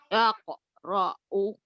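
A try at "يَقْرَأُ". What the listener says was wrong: Ya, bukan tak Bu. Yakra'u. Ketuker. Yaqra'u.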